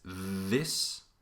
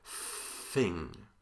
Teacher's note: the tip of your tongue is touching your teeth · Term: dental